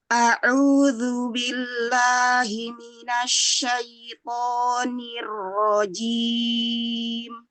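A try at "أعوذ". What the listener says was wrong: Iya, a'udzu, hati-hati zalnya ada udara ya di situ ya. A'udzu, bersihkan lagi.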